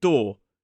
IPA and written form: dɔː (door)